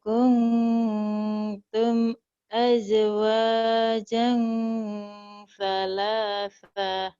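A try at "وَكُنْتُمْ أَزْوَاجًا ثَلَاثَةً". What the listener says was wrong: Salasah. Pendek.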